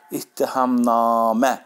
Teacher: na uzansa da, mə hecasındadır vurğu. Ahəng qanı pozulmuşdur. · Düz, vurğu sonuncu hecadadır. İttihamnamə.